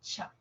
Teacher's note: en la africada primero se cierra o sea se produce una oclusión y luego se van a mantener ahí un poquito de fricción